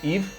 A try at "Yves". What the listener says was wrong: No, you don't pronounce the S if you're from Belgium or France.